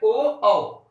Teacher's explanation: अगर हम बात करें ओ औ कंठोष्ठ, कंठ और ओष्ठ की सहायता से ओ औ शब्द का जो वर्ण है इनका उच्चारण किया जाता है